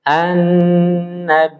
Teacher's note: Jadi huruf nun bertasdid itu harus ditempo